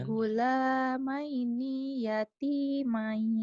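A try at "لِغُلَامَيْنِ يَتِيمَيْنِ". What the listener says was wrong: Emang ninya panjang ya? Panjang ya? Coba lagi, jangan dipanjangin. Lighulamaini yatimain.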